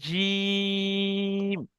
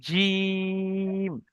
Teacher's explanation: হ্যাঁ, জিমের নিচে তিন লেখা আছে, তাহলে আমরা যখন জিমকে পড়বো তখন তিন আলিফ পরিমাণ টান দিয়ে আমাদের পড়তে হবে